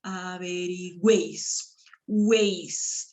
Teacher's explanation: Acá la U, la E y la I han sido pronunciados en una misma sílaba. A eso se llama triptongo.